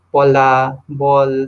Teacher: these sounds are produced when the upper and the lower lips come together to construct the airflow of the mouth so bilabial so english